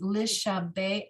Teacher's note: when you have the chet, the patach under it as the last part, the very last letter of a word, it gets inverted and pronounced ach